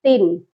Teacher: تن یہاں پر غنہ کبھی بھی نہیں کرنا، یہاں پر پڑھا جائے گا تن، کیونکہ آگے حروف حلقی ہے، اس لیے یہاں پر ہم نے صرف اظہار کرنا ہے۔